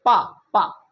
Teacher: जब पा बोलेंगे तो हमारी ओंठें जो होती हैं एक आपस में मिल जाती हैं। का बोल रहे थे तो हमारी ओंठें नहीं मिल रही थी, लेकिन पा बोलेंगे तो हमारी ओंठें मिल जाएंगी। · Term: पा वर्ग